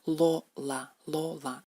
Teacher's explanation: En ruso el sonido es más dental. En ruso es Lola, Lola. La punta de la lengua aprieta los dientes frontales.